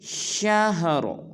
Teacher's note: وقف میں را کو پر ادا کریں گے